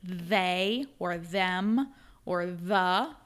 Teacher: the voiced TH, so the first sound in they or them or the, those are all the voiced TH